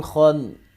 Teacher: نون پہ ہر صورت غنہ ہوگا کیونکہ نون مشدد ہے